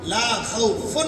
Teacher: تنوین ہے، فا کے اوپر 2 پیش ہے، اس کے بعد عین آ گیا ہے، ہم وہاں پہ اظہار کریں گے، لا خوف نہیں ہو سکتا، لا خوفن ہوگا۔